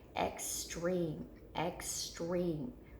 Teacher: we hear that long e after our chin hits our hand so it's in the second syllable